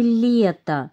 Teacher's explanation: в слове лето мягкий согласный получается ль